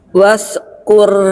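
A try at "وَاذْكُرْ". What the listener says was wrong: Wah, huruf zal makhrajnya di ujung lidah sentuh gigi sari. Wazkur.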